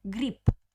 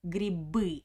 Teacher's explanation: we write b at the end of the word, but I pronounce it p, like papa, father, not b. Grip. Because at the end of the word, all Russian consonants have a weak position.